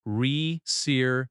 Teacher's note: The stress falls on the third syllable.